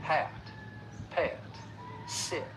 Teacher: listen for that diphthong, that short vowel sound followed by that slight schwa sound. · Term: off-glide schwa